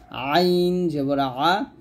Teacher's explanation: আইন চাপ দিয়ে বলতে হবে হলকের মাঝখান থেকে